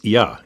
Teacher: in formal or written French, that phrase would be il y a, there is or there are. But here, it becomes ia in spoken French